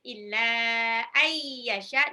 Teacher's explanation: nun sukun ketemu ya, idgham miruna. Yasha, shinnya 6 harokat.